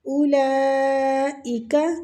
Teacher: اولئک لام پہ جو مد ہے یہ مد واجب متصل ہو رہی ہے، اس کو کھینچیں گے تقریباً 4 الف